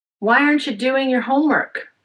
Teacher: Focus on why doing homework. Aren't you? Your are unstressed. But I could have stressed aren't if I wanted to.